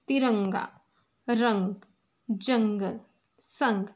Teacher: इनका उच्चारण नाक से किया जाता है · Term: अनु संवार